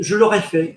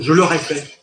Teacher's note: the vowels you are going to hit are going to go high vowel, middle vowel, low vowel in the same sentence. Whereas English kind of stays within a similar range.